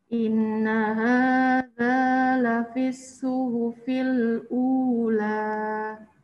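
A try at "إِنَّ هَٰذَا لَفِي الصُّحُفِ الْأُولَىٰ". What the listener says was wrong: udah bagus nunnya tapi kurang setengah inna hadza inna hadza lafis suhufil ula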